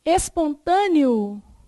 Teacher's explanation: um ditongo oral pronunciado pela boca